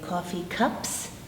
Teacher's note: P doesn't vibrate the s is air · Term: no vibration